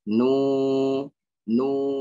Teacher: Nu, panjangnya juga dua harakat.